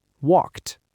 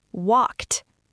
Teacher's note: Listen to that cluster. A K and a T smashed together.